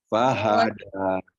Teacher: mengeluarkan huruf H-nya itu pada posisi tenggorokan bawah